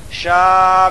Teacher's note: بعد حمزہ اسی کلمہ میں ہے اس لیے مد متصل ہوگا مد متصل کو 3 الف 4 الف کے برابر کھینچ کر پڑھیں